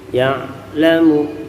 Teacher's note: kemudian ya'lamu, ain sukun, nafas berhenti sejenak.